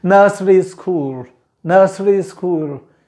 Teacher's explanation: school जहाँ last में ल आता है उसको usually pronounce नहीं करते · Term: dark L